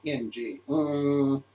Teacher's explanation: in the back to the mouth oh well all bottled up the larynx is high the throat is closed · the sound goes in the nose because it's a nasal consonant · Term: velar nasal